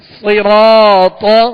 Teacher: صاد بھی پر پڑھیں گے، حروف مستعلیہ میں سے را پر زبر ہے، را کو پر پڑھیں گے، را کے ساتھ الف مدہ ہے، ایک الف کی مقدار، اسے کھینچ کر ادا کریں گے. طا حروف مستعلیہ میں سے ہے، اسے بھی پر پڑھنا ہے